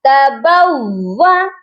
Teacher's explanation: واو مشدد ہے، اس پر ہم نے سختی بھی کرنی ہے اور 2 بار بھی پڑھنا ہے